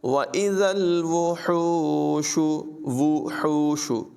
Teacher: حا کی آواز نمایاں کریں گے، حلق سے نکالیں گے